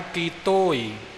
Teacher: ਤੱਤੇ ਦੇ ਹੋੜੇ ਉੱਪਰ ਜ਼ੋਰ ਨਹੀਂ ਆਵੇਗਾ। ਕੱਕੇ ਦੀ ਬਿਹਾਰੀ ਨੂੰ ਪਹਿਲਾਂ ਪ੍ਰਮੁੱਖ ਰੱਖਣਾ